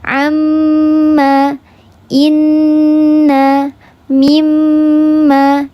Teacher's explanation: Yang paling sempurna ini gunnahnya didengungkan 3 harokat, seluruhnya masuk ke hidung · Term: akmal mattaqun